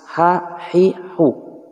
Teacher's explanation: ha jelas, ha hi hu, wastul halqi tengah tenggorokan